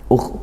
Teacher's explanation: suaranya ngalir ada desisan cuman tidak sedesis huruf-huruf sin seperti itu